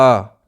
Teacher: लघु स्वर से थोड़ा सा समय ज़्यादा लगेगा, यानी डबल टाइम हम लेंगे। जैसे अ बोल रहे हैं तो आ, ठीक है, थोड़ा सा उसमें टाइम बढ़ जाएगा। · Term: दीर्घ स्वर